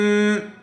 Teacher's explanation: میم غنہ اور اخفا کے ساتھ نون کو میم سے بدل کر غنہ اور اخفا کے ساتھ پڑھیں گے